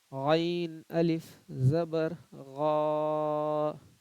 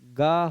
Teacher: غا سے یہ گا ہو سکتا ہے، تو گا نہیں، حلق سے ہی غین کو بھی پڑھنا ہے. جو صحیح تلفظ ہے غین کا اس کو برقرار رکھنا ہے.